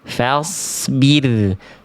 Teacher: Fa-nya tipis, so-nya tebal.